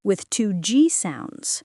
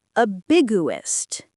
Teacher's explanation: The G sound is just held for a moment.